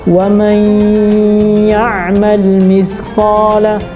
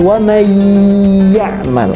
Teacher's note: Kalau kita baca mayya ada sentuhan hidung, berarti nunnya masih ada, masih tersisa sedikit. Karena masih tersisa berarti leburnya nggak total, karena masih ada yang tersisa. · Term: idgham bi gunnah nakis